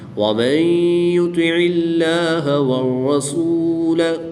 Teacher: را مشدد پر زبر ہے تو اس لیے اس را کو پر یعنی موٹا پڑھیں گے۔ الف اور لام یہ رسم الخط کے لحاظ سے لکھے گئے ہیں، ہم ان کو نہیں پڑھیں گے۔